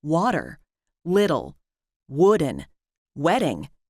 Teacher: in the middle is neither a t nor a d it's a flap